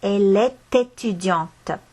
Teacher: Ma hääldan selle T sealt esti lõpust välja.